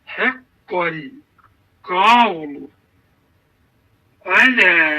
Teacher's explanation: Biz burda elə etməliyik ki, qaf hərfi öz qalınlığını saxlamalıdır. Ləm də incəliyini. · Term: qaf qalın